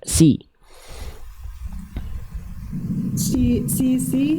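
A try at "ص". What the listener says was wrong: Nah, sisi. Nah, itu yang sisi tadi itu shin, beda lagi. Cukup lafalkan sisi biasa, coba si. Oke, sekarang lafalkan sisi, tapi bunda bayangkan lidah bunda didorong ke dalam, bagian belakang lidah bunda dorong ke dalam, kayak bunda lagi mau nelan sesuatu. Sli.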